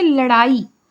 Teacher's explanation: उक्षिप्त व्यंजन है। एकर उच्चारण में जीभ के आगू भाग ऊपर उठ के पाछू डाहर मुड़ जाते और फिर नीचे आ जाते।